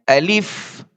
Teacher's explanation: الف جو ہے یہ منہ کے اندر کا جو خالی حصہ ہوتا ہے وہاں سے یہ ادا ہوتا ہے